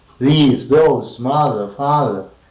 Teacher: front of the tongue is against the upper teeth